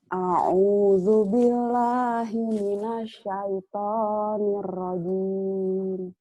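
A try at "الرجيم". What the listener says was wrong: Nirnya nyamber, Nir Rahim kurang nyamber. Gitu, Nir Rahim.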